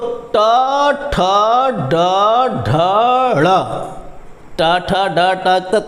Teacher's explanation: थोड़ा सा दांत के पीछे जो जा रही है जीभ ट ठ बोलने पर उसी स्थान को मूर्धा कहते हैं